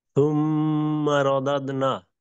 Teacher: মিমের উপর হরকতের পরে মিমের উপর তাসদিদ ওয়াজিব গুন্না